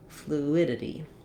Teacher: So it is also how we say the word flu, or you could write it this way, just the oo sound, no glide, fluidity. So my main stress is going to be on my id